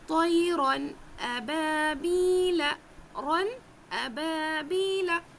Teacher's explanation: نون کو ظاہر کر کے پڑھنا ہے، تنوین کو ظاہر کر کے پڑھنا ہے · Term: تنوین کی آواز